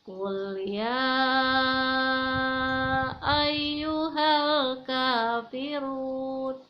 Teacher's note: Kul ya dibaca panjangnya 5 ketuk · run al-kafirun itu pun dibaca panjangnya hanya 2 ketuk saja, tidak boleh lebih